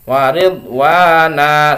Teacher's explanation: Jadi fathatain yang diwaqaf maka tanwinnya diganti dengan panjang, itu namanya mad aiwad.